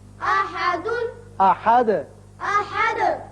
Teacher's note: هو اللہ احد ہے لیکن یہاں آیت ختم ہوتی ہے لہذا دال ساکن ہو جائے گا اور اس کی صفت قلقلہ ادا کریں گے. احد کر کے پڑھیں گے.